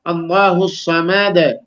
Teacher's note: لیکن اس کے بعد دیکھیں اللہ الصمد دال پہ قلقلہ کرنا ہے اس وجہ سے وقف کی وجہ سے